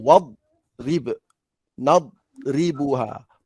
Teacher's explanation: Kalau baca nadribuha salah lah. Tak boleh bunyi lantun sebab dia kena ada sifat istitalah penuh.